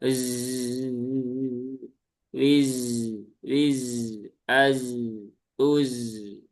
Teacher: Zai itu dia punya sifat yang namanya as-sofir ya. Berdesis. Maka desisnya tunaikan.